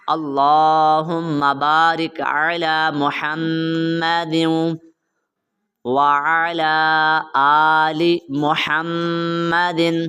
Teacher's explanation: دال کو واو کے ساتھ آپ نے ملانا ہے